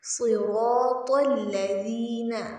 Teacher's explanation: صراط میں صاد بھی موٹا پڑھا جائے گا، را بھی موٹا پڑھا جائے گا، اور تو بھی۔ صراط الذین، حرف ذال کو نرمی سے پڑھیں گے۔